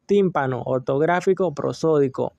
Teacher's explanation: Esdrújula, el acento se ubica en la antepenúltima sílaba.